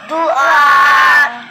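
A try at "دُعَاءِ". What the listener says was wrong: लंबा करे, दुआ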